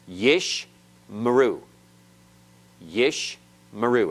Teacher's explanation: and you cannot have two vocal schwas back to back so the first one is silent closing the first syllable yish and the second one is vocal opening the next syllable